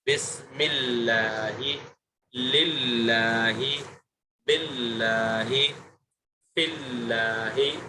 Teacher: لفظ اللہ کے لام سے پہلے والے حرف پر اگر زیر ہو تو اس لام کو باریک پڑھیں گے